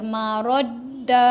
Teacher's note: Huruf dal tak ada dengung tau walaupun ada sabdu. Marad, tekan je.